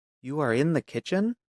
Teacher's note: a statement with a rising tone becomes a question